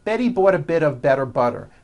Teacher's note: notice that you do not hear any T sounds.